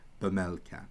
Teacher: there's like a little e sound there but it's a really weak e sound